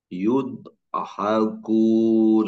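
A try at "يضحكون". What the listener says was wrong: Ini fathah, ya. Nanti alirkan Pak, tempelkan alirkan yang sukunnya kepada H, jangan diputuskan. Tapi jangan dipantulkan. Yadhakun.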